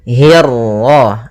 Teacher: hi-nya tipis, kasrah bertemu ra yang tebal · untuk huruf ra ketika dia berharakat tasydid itu atau dia berharakat sukun, dia ra-nya 1 kali takrirnya. Tidak boleh banyak-banyak, tidak boleh hirrah. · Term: ra tafkhim